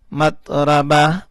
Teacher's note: وقف کی صورت میں گول والا تا ہا بن گیا